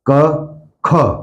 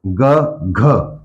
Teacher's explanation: क ख ज्यादा हवा आ गई ग घ ज्यादा ह लग गई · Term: महाप्राण